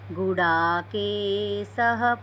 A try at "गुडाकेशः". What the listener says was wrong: आपका उच्चारण ठीक है, लेकिन ये गुड़ा के स बोले तो स, ये सरसों वाला स बोले आप, वास्तव में ये शहद वाला स है।